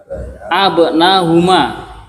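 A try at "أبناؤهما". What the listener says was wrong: Lah, kenapa hamzahnya kok dibuang? Kenapa antum abanahuma katanya? Abanauhuma.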